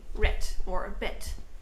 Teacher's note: especially if there's a d in the end of an english word we will most likely pronounce it as a t